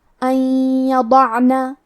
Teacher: کلمت ان کے آخری میں نون ساکن ہے، پھر حرف الیا ہے کلمت یضعنا، یا حروف الادغام بغنہ میں سے ہے، تو ہم یہ حکم کو غنہ اور تشدید کے ساتھ ادا کریں گے